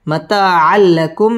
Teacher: তানবিনের বামে লাম ইদগামে বেলাগুন্নার হরফ গুন্না ছাড়া মিলিয়ে পড়তে হবে